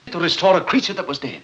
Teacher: A very clear dramatic rolled R when he says, Restore a creature that was dead.